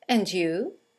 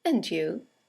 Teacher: And you is a statement. It has a falling intonation, and it's used to return the compliment or the greeting.